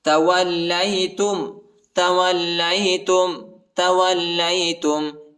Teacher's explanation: لام کو شدت کے ساتھ سختی کے ساتھ پڑھیں گے.